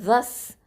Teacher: ஜால் ஃபத்ஹாவை சீனோட இணைச்சு சொல்லுவோம். அப்போது ஜால் ஃபத்ஹா சீன் ஷத்தா ஜஸ்.